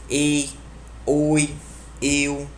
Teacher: Vai da vogal aberta para uma fechada. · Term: ditongo aberto